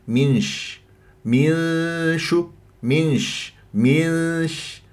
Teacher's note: لازم اروح الى مخرج الشين لانه اخفاء ما تقول لي من شف من هذا ذهاب الى مخرج النون